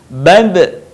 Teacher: Ketika huruf Ba dalam posisi mati, suaranya terdengar mantul.